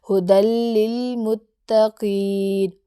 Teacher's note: اب جیسے اگزامپل ہے ہدل للمتقین، ہدل، ٹھیک ہے، یہ دال کو لام سے ملایا لیکن غنہ کے بغیر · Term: ادغام